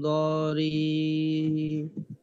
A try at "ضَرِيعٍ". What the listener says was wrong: আইন আনতে হবে ضريع চমৎকার এভাবে গলায় একটু চাপ দিতে হবে ضريع আবার ইয়া এরকম যেন না হয় ضريع গলায় একটু চাপ দিয়ে ছেড়ে দিতে হবে আবার বেশি চাপাচাপি করা যাবে না لا يسمن